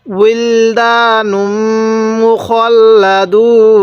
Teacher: এই মিমের মধ্যে নাকের বাসি দ্বারা গুন্নাহ করব, কারণ মিমে নুনে তাজদিদ হলে গুন্নাহ করা ওয়াজিব হয়ে যায়।